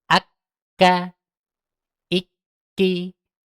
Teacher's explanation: kaf dengan qof sama ketika tasydid yakni berhenti suaranya baru ucapkan harakatnya